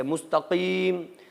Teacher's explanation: مستقیم قاف زبان کی جڑ سے